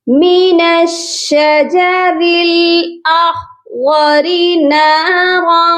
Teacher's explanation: یہاں پر خا کو بھی موٹا کریں گے، غاد کو بھی موٹا کر کے پڑھیں گے، لیکن را جو ہے وہ باریک پڑھی جائے گی کیونکہ اس کے نیچے زیر ہے. اور نارن، نارن کی جو تنوین ہے اس پر بھی چھپا ہوا غنہ ہوگا.